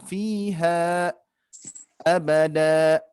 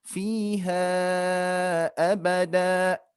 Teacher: kalau dipisahkan dia menjadi dua harokat fiha abada sedangkan kalau diwasalkan disambungkan menjadi empat harakat